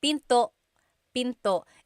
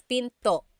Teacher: Don't forget to stop the sound at the end. That's called a glottal stop.